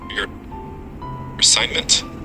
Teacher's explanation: The word assignment has its main stress in the middle on sigh and the ending m has a weak vowel uh.